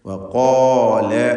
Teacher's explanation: ഇനി വഖഫ് ചെയ്യാതെ ഓതുമ്പോൾ അങ്ങനെ ദീർഘം വരാതെ 2 ഹറക്കത്തിൻ്റെ അളവിലുള്ള സാമാന്യ ദീർഘം മാത്രം നൽകിക്കൊണ്ട് വവരിസ സുലൈമാനു ദാവൂദ വഖാൽ എന്ന് ഓതേണ്ടതാണ്. വഖാല എന്ന് പറയുമ്പോൾ ഖാഫിനും അതിൻ്റെ ദീർഘാക്ഷരമായ അലിഫിനും തഫ്ഖീം കൊടുക്കണം. ഇസ്തിഅലാഇൻ്റെ ഹർഫായ ഖാഫിനെയാണ് ദീർഘിപ്പിക്കുന്നത്.